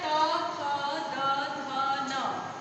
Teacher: त वर्ग को बोलते समय जीभ हमारी दांतों से टच हो रही है, इसलिए इसे बोलेंगे दंत। इसका उच्चारण स्थान है दंतस, दंतस, दंत।